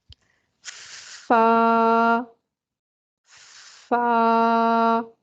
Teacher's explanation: کیونکہ یہ اس کی صفت ہے تو ہمیں صفت کا بھی خیال رکھنا ہے. فا کو ادا کرتے وقت جو ہماری کیفیت پیدا ہوتی ہے وہ ہمس کی کیفیت ہوتی ہے. آواز میں پستی اور ضعف پیدا ہوتا ہے اور سانس جاری رہتی ہے.